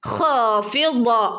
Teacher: വായ നിറച്ച് പറയേണ്ട അക്ഷരമാണ്, ഉയർത്തി പറയേണ്ട അക്ഷരവുമാണ് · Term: ളാദ്